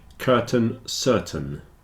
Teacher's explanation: the stress is on the first syllable so the second syllable tends to get contracted down a bit and in this case it's a little bit like an e